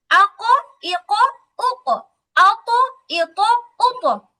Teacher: কফ জবর ক, ত জবর ত বলতে গেলে মুখটা হালকা গোল হয়